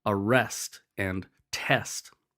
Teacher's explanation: The accented syllable in these is the last syllable, arrest and test. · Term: masculine rhymes